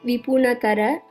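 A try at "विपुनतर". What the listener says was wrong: Nipunatara. And when you sang it, it sounded a little bit like Nipunahatara. So just be a little careful when you pronounce.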